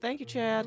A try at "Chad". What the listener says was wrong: Chad, you put some extra syllables in there. Chad.